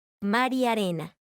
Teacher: si pronunciamos la siguiente frase de forma rápida y sin pausas escucharemos como la palabra mar y la y unen sus sonidos